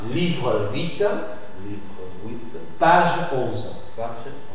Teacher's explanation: le E de livre, le E de page, je l'articule parce qu'elle va suivi de mots comme 8 ou 11. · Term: E muet